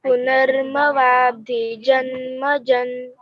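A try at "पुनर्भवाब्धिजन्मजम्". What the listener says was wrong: It is not ma. Ma nahi hai. Bha hai, bha. Bhakta. That bha. Punarbhavabdhi Janmajam. Janmajam.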